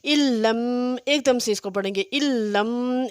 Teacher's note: علم، ایک دم سے اس کو پڑھیں گے، علم، یہ ایک ساکن حرف ہے، دوسرا متحرک حرف ہے، اس ساکن حرف کو ہم نے اس متحرک حرف میں اس طرح سے ملانا ہے کہ یہ لام ایک مشدد حرف پڑھا جائے، اس کے لیے یہ علامت بھی اوپر لگا دی گئی ہے، علم۔